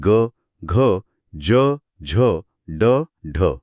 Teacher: याउलट मृदू व्यंजने, ज्यांना घोष किंवा नादवर्ण म्हणतात, त्यांचा उच्चार कोमल असतो आणि त्यातून एक प्रकारचा नाद किंवा गुंजन निर्माण होते. स्वरयंत्रात एक कंपन जाणवते